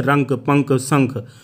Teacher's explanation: इनका उच्चारण करते समय वायु केवल नाक से निकलती है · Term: अनुस्वार